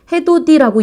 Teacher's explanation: 해돋이 이런 게 국외음화입니다. 이렇게 해서 디귿, 티읕이 이를 만나서 지읒, 치읓으로 바뀌는 것 이것이 바로 국외음화다